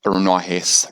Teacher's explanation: A bit like a N sound with the tongue curl back. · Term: nasal retroflex